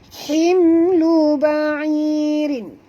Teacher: mim mati bertemu lam, tak boleh dengung, izhar syafawi.